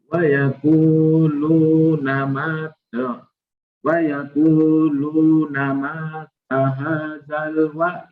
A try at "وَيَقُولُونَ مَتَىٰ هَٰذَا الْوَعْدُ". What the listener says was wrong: pendek. Mimnya pendek. Masih panjang. Mimnya pendek.